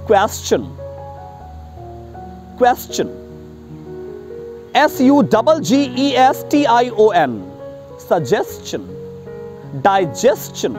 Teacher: STION का pronunciation शन नहीं होता, चन होता है